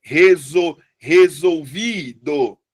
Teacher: É resolvido. A sílaba mais forte é o vi.